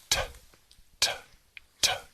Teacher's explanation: You don't use your vocal cords to pronounce the termination. Y por consiguiente, pronuncias la ED sin utilizar tus cuerdas vocales. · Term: sonido sordo